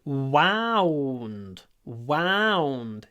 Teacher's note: W, lips forward. Wa, lips back.